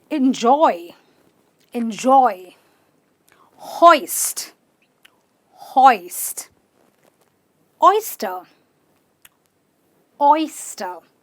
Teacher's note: I go o and then I close my mouth and I go oi. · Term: oi sound